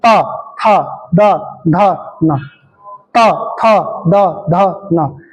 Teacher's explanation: हल्की सी जिव्हा आपके दांतों से टच होगी। इसलिए पांच के पांच वर्ण कहां से बुलेंगे? दांतों से बुलेंगे। इसलिए इनका नाम दंतीय वर्ण है।